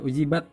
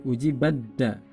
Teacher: Nah, tidak dibaca ujibat, tapi ujibadda. Ta-nya hilang, masuk pada da.